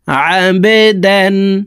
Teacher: বা কলকলার হরফ নিচের দিকে ধাবিত করে ধাক্কা দিয়ে উচ্চারণ করতে হবে